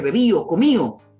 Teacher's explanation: La pérdida de D intervocálica, muy usual en nuestro medio, es netamente andaluz.